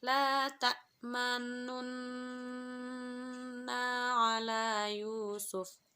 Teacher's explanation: ismam, yaitu memonyongkan mulut saat membaca huruf